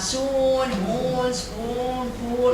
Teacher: The nearest cardinal vowel to this is number 8. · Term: long vowel